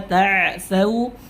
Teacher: Kulu washrabu mir rizqi, nun bertemu ra idgham bila gunnah, riz huruf zai berikan sifat sofirnya, rizqillahi wala ta'thau, jangan tak tapi ta, ain punya sifat tawassut di mana suaranya tidak boleh seketika itu berhenti